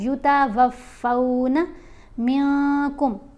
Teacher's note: نون کی آواز کو ناک میں چھپا کر پڑھنا ہوتا ہے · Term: اخفا